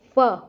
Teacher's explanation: फ, होठ भी लग रहे हैं, दांत लग रहे हैं हमारे होठों पे आके। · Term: दंतोष्ठ्य वर्ण